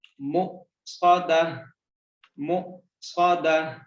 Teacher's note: وقف کرنے کے لیے اگر تو آخری حرف گول تا ہو تو اس گول تا کے اوپر جو حرکات ہوتی ہیں ان کو جزم میں بدل دینا ہے اور تا کو ہا میں بدل دینا ہے۔ یہاں پہ تا نہیں پڑھا جائے گا، ہا پڑھا جائے گا اور جزم سائن کے ساتھ پڑھا جائے گا۔